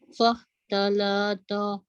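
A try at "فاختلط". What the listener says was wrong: Lah jangan panjang. Fakhtalato. Fakhtalato. To jangan ta. To.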